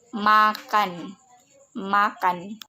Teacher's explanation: M, ciri-ciri hidup, nasal, bilabial